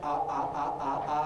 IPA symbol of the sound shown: ʔ